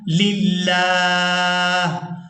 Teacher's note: یہاں ہم نے لفظ اللہ کے لام کو باریک ادا کرنا ہے کیونکہ لفظ اللہ کے لام سے پہلے والے لام کے نیچے زیر ہے، تو یہاں لام باریک ادا ہوگا۔